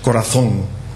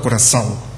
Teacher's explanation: La final es prácticamente igual, la nasalización final es prácticamente igual